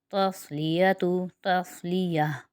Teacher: تا صاد زبر تس، لام زیر لی، تسلی یا زبر یا، تسلیہ تا پیش تو، تسلیتو تسلیہ۔ یہاں پر صاد جو ہے حروف مستعلیہ میں سے ہے، اس لیے اس کی ادائیگی موٹی ہوگی۔